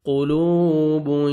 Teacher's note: क़ाफ को मोटा करके पढ़ना है, वाव मद्द है, 1 सेकंड आपने लाम को खींचना है, वाव जज़म से पहले पेश है।